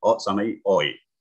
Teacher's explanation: Diphthongs itu jadi huruf O meluncur ke I. Ya, jadi luncurnya langsung aja. Enggak dibentikan, enggak O, I.